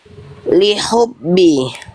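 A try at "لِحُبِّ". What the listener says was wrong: Jangan masuk ke kho, jangan terlalu kuat, nantinya terlalu keluar makhrajnya. Hak kecil di tengah tenggorokan.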